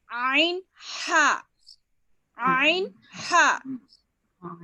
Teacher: عین ہا درمیانی حلق سے ادا ہوتا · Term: وسط حلق